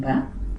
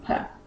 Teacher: ba is a plosive, it is a bilabial, and it is also voiced.